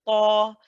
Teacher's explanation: because ta is a heavy letter, we've got to make sure the back of the tongue is lifted.